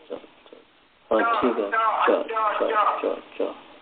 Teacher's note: जब आप च का उच्चारण करते हैं तो जो मध्य भाग है जीवा का जो मध्य भाग है वह ऊपर की ओर सटने का प्रयास करता है